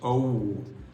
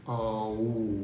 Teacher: We don't end by saying oh. We don't turn into this oo. We just say o.